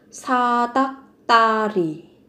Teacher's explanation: gấp đôi phụ âm tờ ở cái âm tiết thứ ba